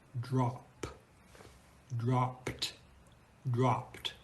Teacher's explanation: the E is completely silent it doesn't sound like an e it doesn't sound like a schwa it's like it's not even there